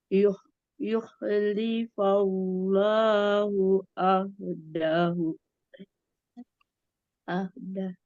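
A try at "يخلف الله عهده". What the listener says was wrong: nah, itu masih panjang. Ahdah. Gitu.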